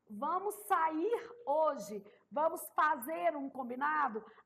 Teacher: um tipo de visto fonológico que é muito comum na oralidade a supressão do R final de formas verbais